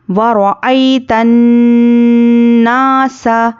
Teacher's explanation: نون پر تشدید ہو تو ناک میں آواز، نون کی آواز کو تھوڑی دیر روکنا ہے، ایک الف کے برابر روکنا ہے، اس کو غنہ کہتے ہیں۔